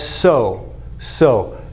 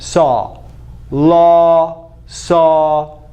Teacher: bigger, open, more open than so or low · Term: sound number 7